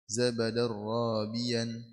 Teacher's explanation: دال تنوين بالفتح مدغم في الراء المفتوحة بغير غنة